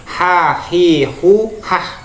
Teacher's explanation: Tengah tenggorokan atau tenggorokan bagian tengah itu merupakan makhrajnya Ha ini harus bersih